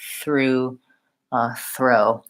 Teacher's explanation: itself then try it together with the r33 through throw it's a challenging combination because you have to move from the very forward between the teeth th to the back